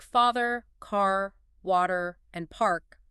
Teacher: So words like father, car, water, and park all keep that clear R sound.